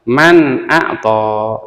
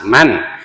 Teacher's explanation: Nah, ini nun mati bertemu dengan hamzah, nun matinya harus dibaca jelas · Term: idhar